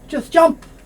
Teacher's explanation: This T sound often not made.